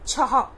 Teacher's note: जब 1 2 3 हम गिनती सीखते हैं, तब 1 2 3 4 5 के बाद छ, ह की ध्वनि निकलती है ना पीछे। तो ये विसर्ग का इस्तेमाल करते हैं और कभी कभी ह भी हम लिख सकते हैं, लेकिन जब ये विसर्ग का इस्तेमाल तो उसमें भी ह की ध्वनि ही निकलती है।